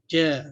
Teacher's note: Dia tengah lidah bertemu. Bila kita sebut istifal, ja, dia akan automatik tengah lidah itu akan terangkat sikit. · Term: huruf jim